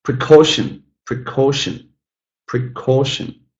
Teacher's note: got three syllables. The middle one is stressed.